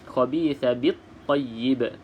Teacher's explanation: di sini tidak perlu bunyikan lam. Jadi caranya terus sahaja masuk ke dalam huruf yang bersabdu. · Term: alif lam syamsiyah